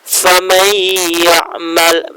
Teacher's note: nun sukunnya hilang menjadi ke huruf ya, tetapi dengan didengung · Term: idgham bil gunnah